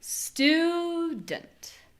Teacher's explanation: Those vowels are different. The first one is long and the second one isn't.